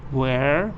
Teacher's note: the man says where this is falling